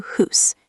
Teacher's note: The word house in some Scottish accents sounds close to hoos.